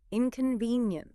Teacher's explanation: If you hit that VEN strong, it gives the word weight. It sounds sincere.